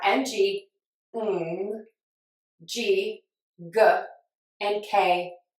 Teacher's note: Why is that? Because the N-G sound has the tongue in the same place as the K and the G